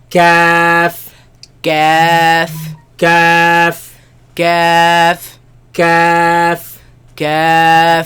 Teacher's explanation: Where the hard palate ends and the soft palate begins, that's where this letter comes from.